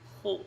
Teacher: Huruf kha keluar di ujung tenggorokan, yaitu huruf rakhawah dan bukan huruf takrir, itu tidak ada getaran. Khu keluar di ujung tenggorokan.